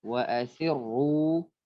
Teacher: Sir tipis, sir ketika ru tebal.